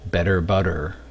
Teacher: the double T pronounced as a flap.